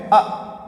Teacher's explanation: जीभ के बीच वाले भाग से एक स्वर का उच्चारण हो रहा है